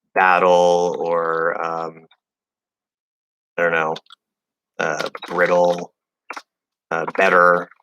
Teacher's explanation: the two T's, in American English, we know it becomes a flapped D, but there's just one sound there